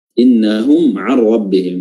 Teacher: Dalam ilmu tajwid dia namanya izhar syafawi, ya. Dikatakan izhar karena mimnya dibaca jelas. Mim ini yang ketemu ain, mimnya dibaca jelas, makanya dikatakan izhar.